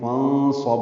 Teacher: نون ساکن کے بعد صاد آنے کی وجہ سے نون ساکن کی آواز چھپائیں گے ، فانصب صاد پر پڑھیں گے اور با ساکن پہ قلقلہ